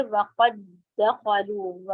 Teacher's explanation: الگ الگ نہیں، مرج کر دیا ہے، دونوں سیم ہے، پہلا ساکن آیا تھا دوسرا متحرک، شدہ لگ گیا ہے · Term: کامل ادغام